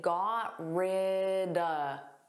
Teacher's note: So notice at the end, you can take the word of and you can make it an unstressed sound and say duh. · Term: connected speech